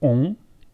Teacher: Si on a ON, ça change un peu, c'est on, un peu plus grave.